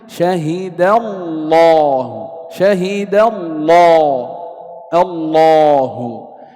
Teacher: إذا لفظ الجلالة إن سبق بفتح فحكم اللام التغليظ التفخيم، نحو شهد الله، شهد الله، الله. إذا لاحظ أن لام لفظ الجلالة هنا سبقت بفتح فحكمها التغليظ التفخيم